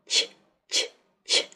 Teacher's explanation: Звук «ч» глухой, мягкий согласный.